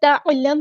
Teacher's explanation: عین کو مستحلق middle throat سے ادا کرنا ہے